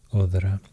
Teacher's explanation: Maybe it was pronounced odra with the voiced version of Thorn. Odra, other.